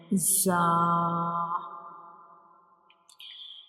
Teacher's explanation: It is also called a whistle letter because when we pronounce za, the whistle-like sound comes like za. So when we pronounce za, we will touch up and down teeth together.